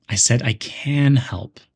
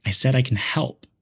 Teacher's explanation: the word can is stressed to show certainty · the word help is stressed to show what's important